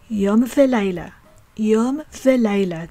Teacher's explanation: examples of the prefix vav which means and being pronounced as v